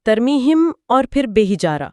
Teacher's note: میم کی آواز بے سے ملنے سے پہلے ایک ہلکی سی گنگناہٹ پیدا کر رہی ہے